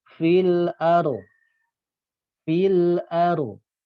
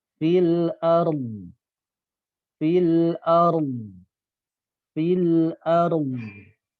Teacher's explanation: Menyertakan dod di sini adalah dengan mengangkat pangkal lidah dan sisi lidah, yaitu makhraj huruf dod ini.